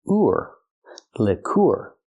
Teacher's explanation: the UR sound using the oo sound like food plus the r